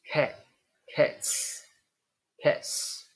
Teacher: the final sound of cat is T it's a voiceless sound then we have voiceless s